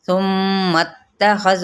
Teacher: साथ ही हम मीम की ज़बर को ता के साथ मिलाएंगे